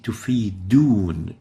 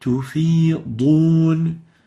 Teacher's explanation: Dhad is a bit difficult for them to pronounce, so they tend to replace it with a dal. They would say تفيدون instead of تفيضون.